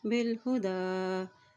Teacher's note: दाल के ऊपर देखिए खड़ी ज़बर है तो यहाँ उसको हम एक हरकत लंबा अदा करेंगे